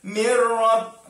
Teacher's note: nun mati bertemu dengan ra. Masukkan tapi tanpa dengung. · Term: idgham bila gunnah